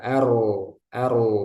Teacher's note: keadaan ro dibaca tebal jadi ro sukun sebelumnya fathah